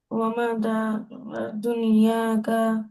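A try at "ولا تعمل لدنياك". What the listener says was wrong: আরে ওয়ামা না, ওয়ালা। ওয়ালা ওয়ালা তা'মাল লিদুনিয়াকা। ওয়ালা তা'মাল লিদুনিয়াকা। ওয়ালা তা'মাল লিদুনিয়াকা।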